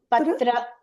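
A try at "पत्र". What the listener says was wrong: No, see, this is Sanskritam. The A should be said. Okay, so patra.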